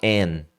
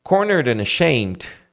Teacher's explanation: Só que você não vai falar and, você vai falar an. Vai tirar o D.